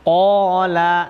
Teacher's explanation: ada qaf huruf isti'la, ko-nya panjang karena ada alif, jadi bacaan mat. Karena ada fathah bertemu alif maka dibaca mat topi panjang.